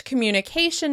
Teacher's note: In English, communication is stressed on the second to last syllable